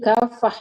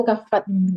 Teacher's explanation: Kalau mau berhenti kafah ya, itu ta marbutah, jangan kafat.